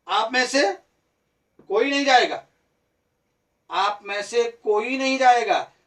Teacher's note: तो कोई पर क्या हो गया? बल पड़ गया। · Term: शब्द बलाघात